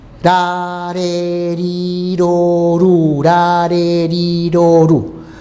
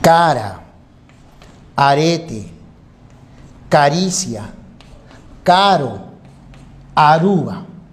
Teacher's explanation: Este sonido se llama vibrante simple. Es un sonido suave.